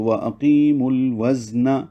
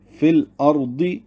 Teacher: میم کو لام سے ملائیں گے، میم پر پیش لگائیں گے، کیونکہ مو واو مدہ ہے تو وہ مد اصلی رہے گی، اس کی پیش کو لام سے ملا دیا جائے گا، اب بیچ میں واو الف نہیں پڑا جائے گا تو وَأَقِیمُ الْوَزْنَ بن جائے گا۔